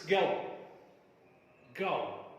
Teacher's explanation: Let us first of all try to understand the 3-term description for this. It is a glide from central unrounded vowel between half closed and half open to the back rounded vowel just above half closed position. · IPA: /əʊ/